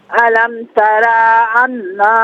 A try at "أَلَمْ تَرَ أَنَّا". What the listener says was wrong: علم ترا میں را کو کھینچی مت۔ علم ترا ان